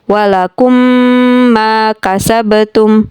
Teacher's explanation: Kemudian idgham mislain. Di sana, mim sukun bertemu dengan huruf mim. Jadi, cara membacanya diiringi dengan dengungan.